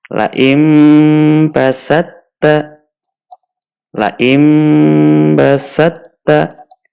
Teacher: To-nya kita masukkan ke huruf ta. Ta-nya kemudian ditasydid.